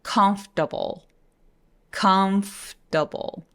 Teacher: O만 사라지는 게 아니라 들어보니까 R도 같이 사라지죠?